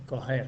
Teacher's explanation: Cuando dicen coger, coger, no pronuncian el sonido j, ese sonido, el de la J, no lo pronuncian